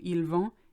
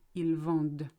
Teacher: The only difference between the two is the D that is pronounced. Because there's ENT after it, you have to say everything up to the ENT, but ignore the ENT itself.